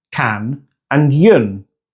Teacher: In canyon, the N and Y are part of two separate syllables, can and yun.